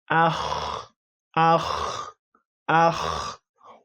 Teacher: When you make the sound ah like this, clearly we know that the sound ends in al-halq, meaning the throat